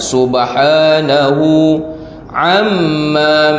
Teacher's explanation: mim yang bertasydid kita baca dengung